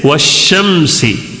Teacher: شمسی کا شین جو ہے نا وہ شمسی حروف میں سے آنے کی وجہ سے الف کو بھی چھوڑ دینا ہے، لام کو بھی چھوڑ دینا ہے